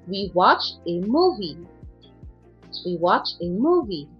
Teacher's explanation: 2-3-1, again, falling intonation yan kasi 1 yung ending. Finality, your statement or sentence.